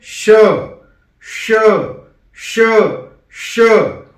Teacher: तो जो तालव्य श है वो हमें उच्चारण करना है जिह्वा को कठोर तालू से स्पर्श कराकर।